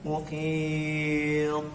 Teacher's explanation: Berhenti di huruf to juga memantul. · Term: qalqalah